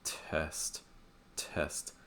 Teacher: your mouth will be more closed and also the front in the middle of your tongue will be high the back will droop down slightly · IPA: ɛ